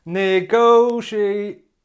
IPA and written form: nɪˈɡəʊʃieɪt (negotiate)